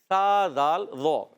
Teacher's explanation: ذال کی ادائی کی زبان کا سرا اوپر کے دانتوں کناروں سے ادا ہوتا ہے